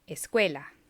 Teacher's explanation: The U, what looks like the U, the Spanish U, and the E combined very rapidly, but you can still hear them both.